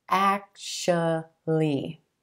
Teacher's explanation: I know it looks like it should be actually, actually, but we're going to give this word just 3 syllables, emphasis on the first syllable, and the A as in black. Actually. And that second syllable is going to be a schwa, sh, sh.